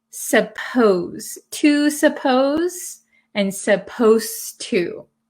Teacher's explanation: when we say supposed to it sounds like the d disappears but it's actually still there